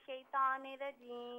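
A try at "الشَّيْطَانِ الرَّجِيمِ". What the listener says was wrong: अच्छा, यहाँ पर आपने जो शैतानिर रजीम पढ़ा तो त्वा को पुर करके पढ़ें, शैतानिर रजीम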